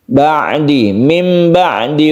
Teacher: mati bertemu dengan ba Ini adalah iqlab yang kita baca caranya Nun matinya itu berubah menjadi mim mati